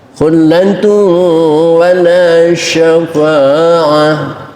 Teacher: tanwin ketemu waw, idghamnya idgham naqis, kurang masuknya, maka kedengaran, masih kedengaran. Khullatun, suara tanwinnya masih kedengaran walaupun samar.